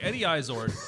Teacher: the second syllable is pronounced ard, not erd